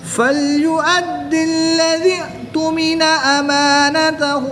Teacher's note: تمام حروف کو باریک پڑھیں گے، اور کہیں پر غنہ بھی نہیں ہے تو ناک میں بھی نہیں پڑھیں گے